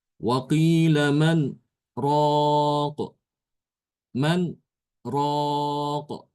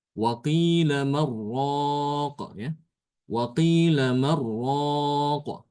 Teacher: Sehingga nunnya langsung diidghamkan ke ra. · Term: Idgham tanpa gunnah